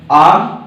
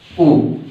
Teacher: आ बोला जाता है कंठ से, उ बोला जाता है होंठ से।